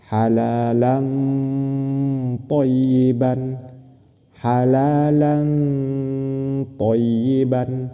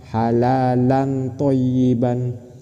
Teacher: Tanwin bertemu dengan tho dihukumi ikhfa. Cara membacanya dengan samar dan berdengung.